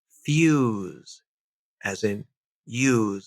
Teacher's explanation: There's no Y in the spelling, but there's definitely a Y there phonetically